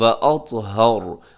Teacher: اطہر میں طا موٹا ہے، آخر میں را ساکن ہوگا تو را پر ہوگا۔ واطہر، اور پر اس لیے ہوگا، موٹا اس لیے ہوگا کیونکہ اس سے پہلے ہا کے اوپر زبر ہے۔